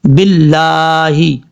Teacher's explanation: با کو جب لام سے ڈائریکٹ کنیکٹ کریں گے تو الف اور لام کو بیچ میں چھوڑ دیں گے، جس لام کے اوپر شد ہے اس کے ساتھ کنیکٹ کریں گے۔